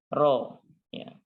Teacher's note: ya tertulis dengan huruf a karena translatenya memang seperti itu tapi untuk membacanya maka dia dibaca dengan tebal dengan tafkhim